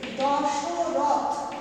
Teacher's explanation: এই অটা কিন্তু এখন উচ্চারণে লুপ্ত হয়ে গেছে। কিভাবে আমরা উচ্চারণ করি না, সেটাকে আমরা উচ্চারণ করি দশরথ হসন্ত, এইভাবে, অর্থাৎ এখানে যে একটা অ ছিল ব্যঞ্জন বর্ণটার সাথে, সেটা কিন্তু লুপ্ত হয়ে গেছে।